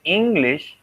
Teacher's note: sound or a g sound next to an n for example in the word english the n sound becomes ing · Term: velarization